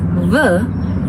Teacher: are both an example of a labod dental sounds why because my upper teeth is touching my lower lip to produce the sounds